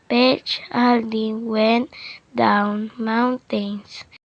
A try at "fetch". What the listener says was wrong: The learner mispronounced fetch again, saying petch just like the first time it was mispronounced.